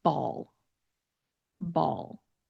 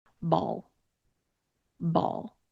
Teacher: You can see the ending sound, what my mouth shape is like. I do not have my jaw very open. I have my lips in a very neutral position and my tongue is reaching just the very, very back of my teeth when I'm ending on that L sound. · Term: dark L sound